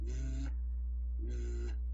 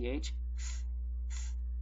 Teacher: There is a voiced TH, th, th, and there's an unvoiced TH, th, th.